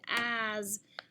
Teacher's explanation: it's a voiced S following a vowel